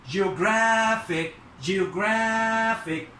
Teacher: طبعا الستريس هنا على ال R A